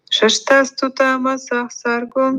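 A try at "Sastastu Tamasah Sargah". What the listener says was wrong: No. It's not Shastas, it's Sastas.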